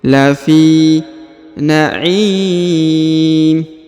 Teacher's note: Huruf fi dipanjangkan 2 harokat karena di depannya terdapat ya sukun.